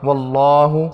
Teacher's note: اللہ کے پیچھے واو ہے اس پہ زبر ہے اس لیے اللہ موٹا پڑھیں گے ، لام پہ کھڑی ہے 1 سیکنڈ تک کھینچیں گے، واللہ